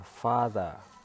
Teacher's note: Coba kita perhatikan beberapa kata ini seperti kata father. Father itu stresnya terdapat pada silaba pertama yaitu fa dan the itu dia tidak mengalami stres.